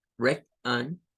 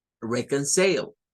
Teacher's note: Luego, entre la O y la N se forma un schwa.